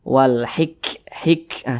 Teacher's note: membunyikannya itu ada desisan angin yang keluar daripada mulut kita Wal hiik Hik seperti itu karena huruf Kaf juga memiliki sifat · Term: huruf hamas